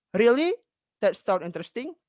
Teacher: kalau seseorang yang terkejut itu, dia akan menaikkan nada suaranya, intonasinya